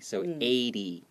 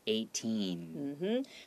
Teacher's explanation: So in order to make 80 sound a lot more clear, even though it's E-I-G-H-T-Y, the T sounds more like D. And then you open your mouth so you don't make it close too early.